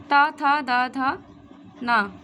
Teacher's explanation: दंत से कौन से बोले जाते हैं त थ द ध न